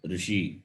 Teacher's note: is just folded and touches the roof of the mouth so the tongue touches the roof and the air is expelled you get the sound therefore this is called cerebral